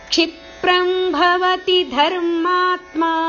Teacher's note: ಧರ್ಮಾತ್ಮ ಶಬ್ದವನ್ನು ಭವತಿ ಶಬ್ದದೊಟ್ಟಿಗೆ ಜೋಡಿಸಿ ಹೇಳಬೇಕು